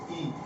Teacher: حمزہ کا مخرج ہے حلق کا آخری حصہ یہاں جا کے آواز ٹکتی ہے